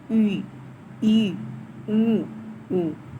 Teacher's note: संवित जिन स्वरों की उच्चारण में मुख द्वार लगभग बंद रहता है, उन्हें संवित कहते हैं, जैसे ई, ई, ऊ, ऊ।